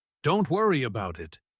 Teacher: with stress hitting hard on worry, it could actually sound passive-aggressive, like he secretly is a little bothered, but is pretending not to be. · If instead he said it sharply, Don't worry about it, with stress hitting hard on worry, it could actually sound passive-aggressive